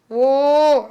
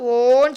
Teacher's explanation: வாய் சற்று மூடிய நிலையில் நாக்கு மேலே தாழ்ந்த நிலையில் இருக்கும்போது உச்சரிக்கப்படும்